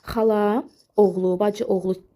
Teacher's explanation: Bu sözlərdə birinci sözün son saiti düşür.